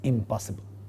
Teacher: the negative prefix ends with ma, which happens to be a labial nasal. Again, for the word possible, the negative is impossible.